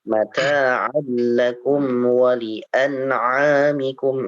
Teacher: Lihat jika ada harokat berdiri yang seperti itu ya, seperti alif, maka itu menandakan di situ ada mad ya. Jadi ada huruf mad. Jadi 2 harokat dibacanya.